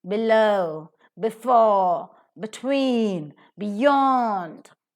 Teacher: the second syllable is to be stressed below before between beyond always the root word is stressed similarly